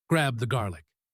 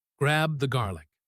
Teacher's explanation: The B and eth sounds are close together, but we slide over them.